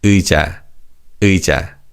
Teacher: And although this 의 is read as 의 in slow speech, in fast speech, 의 almost sounds like ư